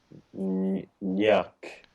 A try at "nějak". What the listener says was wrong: Nějak. Long A, nějak.